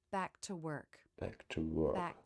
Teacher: native speakers will skip the release of a stop consonant when the next word begins with a consonant